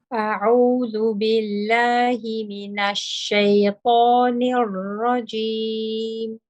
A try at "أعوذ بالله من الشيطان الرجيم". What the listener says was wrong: Just mina shaitan, the noon. Mina is a little bit on the heavy side. Mina, keeping it light. Mina shaitan.